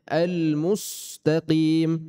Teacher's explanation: Mim harakat dhamma, otomatis kita majukan bibirnya. Kemudian penahanan sin jangan terus dimajukan.